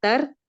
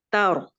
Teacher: اگر آپ کرتی ہیں تر، یہ ہے را باریک، لیکن چونکہ ساکن را سے پہلے مفتوح حرف ہے، لہٰذا ہم اس کو پر کریں گے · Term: را پر